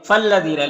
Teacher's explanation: فالذین لام مشدد ہے تو پیچھے والے متحرک حرف سے ملا کر پڑھیں گے. اور یہاں پر یا مدہ ہے، لام میں الف مدہ ہے.